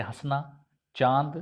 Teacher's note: नाक और मुख दोनों का प्रयोग करके इन अनुनासिक शब्दों का प्रयोग किया जाता है